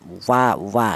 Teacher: Kalau huruf wawu ini dihasilkan dari kedua bibir yang renggang ya. Kita mengucapkan wa itu melibatkan kedua bibir baik bibir atas atau bibir bawah. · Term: huruf wau